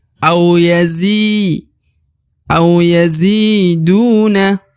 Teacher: di depan huruf Zi terdapat ya sukun atau ya mati maka Zi dipanjangkan dua harakat au yazi au yaziduna kemudian huruf du dibaca panjang dua harakat